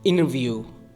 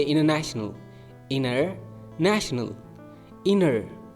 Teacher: t and n are so close in the mouth that the T can be disappeared